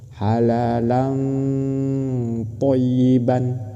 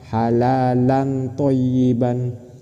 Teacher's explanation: Ketika membaca tanwin mau masuk ke huruf ikhfa, di sini mau masuk ke huruf to, itu harus samar, disamarkan ke to.